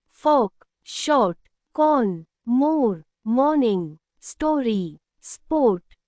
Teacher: when O comes before R, the sound changes. It becomes long and deep, like or ar. In British English, it's a round and open sound, or.